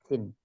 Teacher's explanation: keluarnya huruf dengan letak ujung lidah paling depan pada dinding dua gigi seri bawah Sin sehingga suara keluar di antara gigi seri atas dan gigi · ujung lidah paling depan pada dinding dua gigi seri bawah Sin sehingga suara keluar di antara gigi seri atas dan gigi seri bawah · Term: huruf Sin